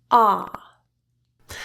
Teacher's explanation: the sound is pronounced with an open jaw. The middle and back of your tongue are in a low back position in your oral cavity. Your lips are in a very open and relaxed position, not smiling, but not tensely rounded in any way.